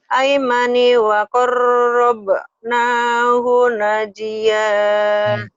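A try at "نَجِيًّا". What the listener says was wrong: Najiyya. Najiyya. Ini agak panjang bagi dua ini. Bagi dua ya. Al-aimani wa qarrabnahu najiyya.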